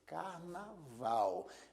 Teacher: a sílaba Val é a sílaba que se pronuncia com mais força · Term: sílaba tônica